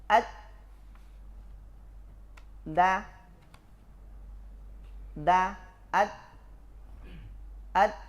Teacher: dal dan po sama-sama bersifat syiddah, tertahan suara. Aslinya dal itu begini.